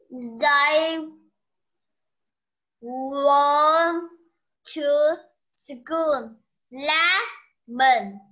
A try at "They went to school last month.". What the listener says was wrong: Cô mới sửa chữ này là chữ gì mà lại đọc là were rồi? Went. They went.